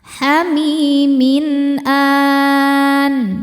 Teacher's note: Min ada idhar halqi karena ada tanwin kasrah menghadapi huruf halqi atau tenggorokan yaitu hamzah. Cara bacanya dibaca jelas ya tanwinnya.